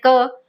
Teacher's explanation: जब हम बोल रहे हैं क तो अ की साउंड आ रही है